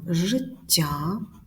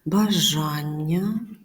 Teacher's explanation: Між двома голосними відбувається подвоєння.